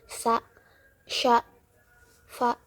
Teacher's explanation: Yang kedua yaitu hames, tidak bersuara ee tanpa ada getaran di pita suara. Contohnya seperti sa, sya, fa.